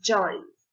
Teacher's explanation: there is friction when the air gradually comes out